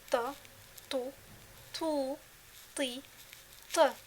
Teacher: So for this letter, the tip of the tongue touches the gums behind the upper front two teeth. This letter is pronounced full mouth. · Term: حرف طاء